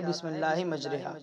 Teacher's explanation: اصل لفظ تھا بسم اللہ مجراہا، را کے بعد میں جو الف تھا اس کو یا کی طرف مائل کر دیا گیا ہے، یعنی جھکا دیا گیا ہے، تو پھر یہاں امالہ ہو گیا، اس کو پڑھایا جاتا ہے بسم اللہ مجریہا۔